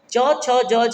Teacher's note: च छ ज झ जब बोलते हैं तो आपकी जीभ जाके आपके तलवे को टच करती है, इसलिए ये तालव्य हैं।